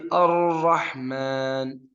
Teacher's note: keluar dari ujung lidah digabung atau bertemu sama gusi atas tapi ada lubang kecil